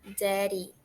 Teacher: a pronúncia de daddy é como se tivesse um R no lugar daqueles dois D